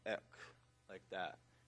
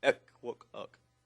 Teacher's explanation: it sounds just like an X, but you say it with rounded lips